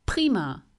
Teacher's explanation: Und sprich prima, das ist hart. Bei prima merkst du einen Luftzug auf deiner Hand. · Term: starken Luftzug